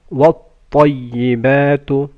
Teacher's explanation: ط should be full mouth